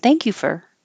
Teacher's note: Instead of making a perfect for, it can be reduced to fur.